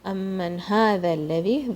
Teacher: ذال from the tip of your tongue.